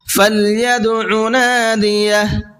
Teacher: دال کے اندر قلقلہ کریں گے، اس لیے کہ دال حروف قلقلہ میں سے ہے